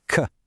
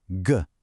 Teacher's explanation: Again, identical position, but the k in cat, k, is a sharp, voiceless little click of air, while the g in go, g, it vibrates.